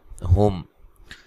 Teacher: میم ساکن کو ہلانا نہیں ہے، ملا کے پڑھیں گے تو یہ میم ساکن کا اظہار ہوگا۔